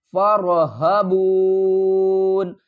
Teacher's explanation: کو را سے ملائیں گے، را کو پر پڑھیں گے اور ہا کو حلق کے نیچے والے حصے سے ادا کریں گے